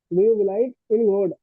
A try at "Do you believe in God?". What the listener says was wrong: हाँ बाबू, आपने जो प्रोनाउंसिएशन है उसका थोड़ा रॉन्ग कर रहे हो, ठीक है? बिलाइव मानी उसको बिलीव पढ़ना है, ठीक है? ठीक है, ये पढ़ने सेशन थोड़ा सा रॉन्ग कर रहे थे।